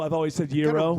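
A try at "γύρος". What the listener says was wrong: Roll the R.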